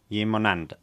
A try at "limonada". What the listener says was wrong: You always put an N in there. Limonada. Limonada. Limonada.